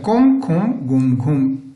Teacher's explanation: यम वर्णों का उच्चारण स्थान नासिका माना जाता है